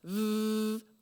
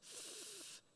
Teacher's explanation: the sound v, our voices vibrate, whereas the sound f, our voices don't vibrate.